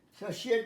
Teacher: TI এখানে তালব্য উচ্চারণ হয়, অনেক সময় TI থাকলে চ হয়, বাট তালব্য হয়।